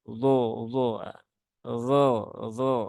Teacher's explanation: walaupun vokalnya itu suaranya seperti suara O ya, tetapi dia tidak boleh diucapkan dengan memonyongkan bibir ya. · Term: huruf dha